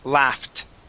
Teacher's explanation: we're going to pronounce an f and then go to a t sound